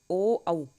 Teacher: ओ औ कंठोष्ठयो, इनका उच्चारण ओ औ अन्यो वर्णयो उच्चारणम उभयो कंठ ओष्ठ स्थानयो भवन्ति, इनका उच्चारण कंठ और ओष्ठ दोनों से होता है